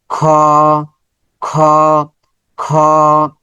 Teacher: গলার উপরি ভাগ থেকে খ বের হবে।